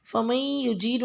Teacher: فمن یجیر میں میم کو یا سے ملاتے ہوئے ادغام یعنی کہ غنہ کی آواز سے پڑھیں